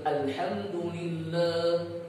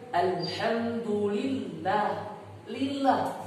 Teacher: betul-betul kasrah, tidak ada imalah, tidak ada kemiringan tersendiri, baik itu sughra, kecil atau besar.